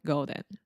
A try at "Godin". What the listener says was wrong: So one thing with the name Godin, this is the O sound. You're almost saying golden, like a golden retriever. So Seth Godin.